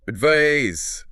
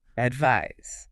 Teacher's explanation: But advise, verb, ends with a Z sound, like wise. Advise. Zzz, that buzzing Z sound.